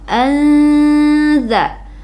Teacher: Kenapa? Karena ada nun mati bertemu dengan huruf za, dibaca samar ke huruf za. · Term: ikhfa hakiki